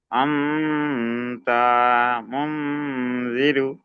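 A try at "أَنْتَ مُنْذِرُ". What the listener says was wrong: তাটা টান হয়ে যাচ্ছে, তাটা হারাকাত, টান কেন হবে?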